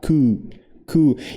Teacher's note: não tem o som de P no final, então é coup, meio que fecha no final, mas não fala, coup.